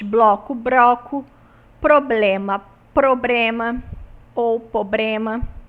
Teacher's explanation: nós temos a troca do L pelo R nos grupos consonânticos